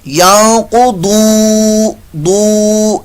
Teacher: قاف بھی پر موٹا آ رہا ہے, ضاد بھی پر موٹا ہے, ضاد کو لمبا بھی کریں گے حروف مستعلیہ میں سے ہے, اور واو مدہ بھی ہو رہا ہے.